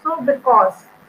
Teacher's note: So stress on the second syllable, which is in this word because. So I'm not giving more stress to be. I'm giving the stress on the second syllable, which is cause.